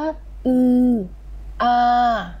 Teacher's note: อือมันก็อยู่ตรงเพดานปากอยู่ช่องตรงกลางๆและอาก็จะอยู่ตรงข้างล่าง